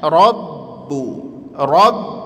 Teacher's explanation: Rabbu gak langsung rabu tekan aja ya karena dia huruf syiddah kuat.